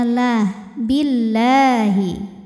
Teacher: Dibi dibunyikan secara tarqik sebab huruf sebelumnya ini berbaris di bawah yaitu berbaris kasrah maka cara bacanya tipis